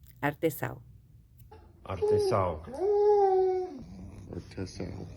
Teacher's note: You're not gonna use the nose as much. I believe the nasal sound in Portuguese is much more in the throat.